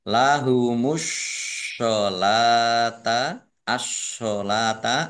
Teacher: alif lam syamsiyah karena tidak dibaca langsung masuk ke huruf berikutnya